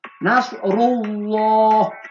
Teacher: Nas ru itu tebal, ru-nya itu tebal. Nasrullah, lapan Allahnya juga tebal ya, berat ke o.